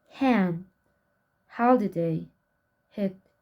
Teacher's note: Spelling system of glottal, fricative, voiceless.